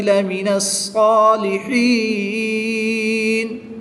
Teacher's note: ہا کے نیچے زیر ہے اور اس کے بعد یا ساکن ہے تو یہاں پر یا مدہ ہوگا۔ یا مدہ کے بعد وقف کی حالت میں نون کو ساکن کر دیں گے تو یہاں پر مد عارض ہوگی، اس کو بھی 2 سے 3 الف تک کھینچ کر پڑھیں گے۔